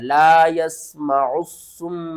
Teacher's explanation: اور یہاں پر میم مشدد کے اوپر آپ نے غنہ کرنا ہے